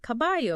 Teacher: It's the tendency to pronounce the L, like a Y sound. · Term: yeísmo